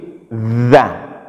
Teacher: Za, gigit dia. Posisi ujung lidah ketika kita baca huruf za ini, ujung lidah itu tergigit. Za. Ya, letakkan dia di ujung lidah letakkan di ujung gigi seri atas.